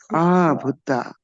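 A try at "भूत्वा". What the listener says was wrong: There is a V here.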